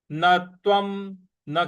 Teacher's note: न के बाद जो आधा त है उस पर हमको आघात देना है। न तत्वम और व के ऊपर जो अनुस्वार है उसका उच्चारण हमको म ले आना है।